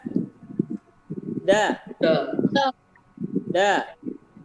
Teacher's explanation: Da. Kuat, karakter pengucapannya kuat, tetapi tidak dikeluarkan nafasnya, ditahan nafasnya ya. Da. Tapi jangan ditahan terus. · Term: jahar